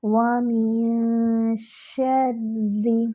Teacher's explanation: وَمِن شَرِّ غَاسِقٍ إِذَا وَقَبَ، واو میں ہونٹوں کو مکمل گول کریں گے، نون پر اخفا کریں گے، 2 حرکات برابر